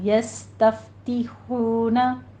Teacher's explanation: क़ौफ को पुर पढ़ते हुए आगे बा पर क़लक़ला करना है। यस्तफ दोनों जगहों पे हमस होगा, सीन में सीटी की आवाज़ आएगी, फा पे भी हमस करेंगे।